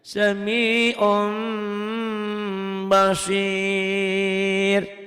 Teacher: Jadi sami'un bunyinya jadi sami'um, ditahan, didengungkan ke hidung seperti ihfa, mirip idgham, cuman bedanya kalau ihfa itu dibuka, ini mirip gunnah. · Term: iklab